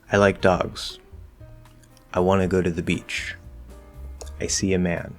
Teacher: intonation simply tells the listener that the statement is complete and it tends to fall off the cliff at the very end so on that very last syllable stressed or not we will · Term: falling intonation